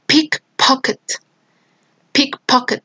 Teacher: a strong aspiration just appear in the accented syllable and weak aspiration appears in the non-accented syllables